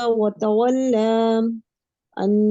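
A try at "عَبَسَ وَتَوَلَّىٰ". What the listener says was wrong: فتحہ زبر ہے نا، ایک ہی حرکت. جھکانا نہیں. دیکھیے ایک چیز میں آپ لوگوں پہ واضح کر دوں، جس کو میں نے ابھی بولا کہ یہ تقلیل ہے، کہ اس کو تقلیل کی طرح ادا نہیں کرنا. تقلیل کس کو کہتے ہیں؟ فتحہ کی آواز کو جھکا کے پڑھنا.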